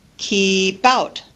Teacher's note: syllables examples keep out that's the one we already saw where the P at the end of the first word becomes something in between the two words · the consonant straddles both syllables it's in between both syllables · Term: linking